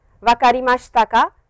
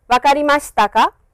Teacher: with ‘ka’ always the intonation is high that is what makes it into a question statement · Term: rising intonation